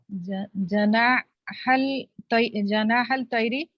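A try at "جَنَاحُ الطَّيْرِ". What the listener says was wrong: Janahat Tayri. Because this is huruf al-shamsiyah. Janahat Tayri.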